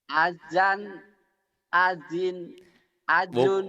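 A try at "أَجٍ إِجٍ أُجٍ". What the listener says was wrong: Bukan Pak, jadi dari A nyamber ke J. Ajan, ajin, ajun.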